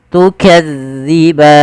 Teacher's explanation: zi tipis zalnya, tu tidak ada desis